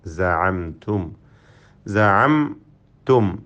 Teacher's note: രണ്ട് സാക്കിനായ മീമ് വന്നു ഈ പദത്തിൽ. രണ്ടും തന്നെ ഇൽഹാർ ഷഫവി നൽകി മണിക്കാതെ വെളിവാക്കണം.